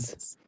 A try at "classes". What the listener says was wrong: না ক্লাসেস ইজ লাস্টে ইজ উচ্চারণ হবে। Is classes.